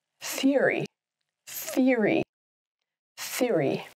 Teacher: So even though there's an O written there, it's silent. The emphasis is on the first syllable.